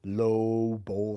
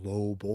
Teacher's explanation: The tongue goes to the bottom, so you have a larger resonating chamber.